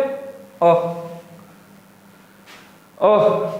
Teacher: अब बोल के देखो एक बार, जो बीच से बोले जाता हो, जीभ के बीच के हिस्से से बोले जाने वाला स्वर अ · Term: मध्य स्वर